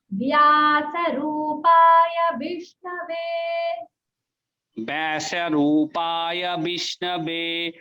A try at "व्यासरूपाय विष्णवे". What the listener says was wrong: ब नहीं बोलेंगे, व्या वा है ये, व्या वा